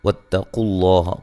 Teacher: قاف کو موٹا تا کو باریک